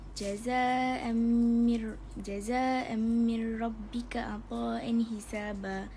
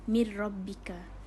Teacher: Dekat mir rabbika tu dia tak ada dengung, dia terus masuk dekat syaddah selepas dia tu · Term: idgham bila gunnah